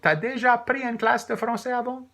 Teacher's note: we tend to ask questions by simply doing as a statement, but with rising intonation.